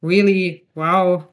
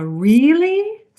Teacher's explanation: So instead of just pronouncing them as really wow which would sound very flat we rise and fall really.